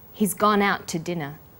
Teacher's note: The t sound is pronounced only once. · The to is unstressed. When we link out, which is stressed, and to, which is unstressed, the final t sound in out is held slightly longer.